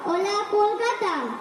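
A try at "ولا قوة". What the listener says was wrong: ওটা কলকাতা হবে না, ওটা হবে ওলা কুওয়াতা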